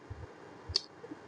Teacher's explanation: জিহ্বার গোড়া তার বরাবর উপরে তালুর সঙ্গে লাগাইয়া দুই নোক্তাওয়ালা কফ। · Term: বড় কফ